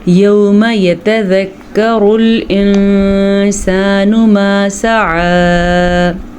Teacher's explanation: یتذکر را پہ پیش ہے تو اس را کو ہم پر پڑھیں گے